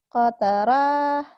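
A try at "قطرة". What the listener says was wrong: Kenapa jadi panjang? Kotaroh. Kotar.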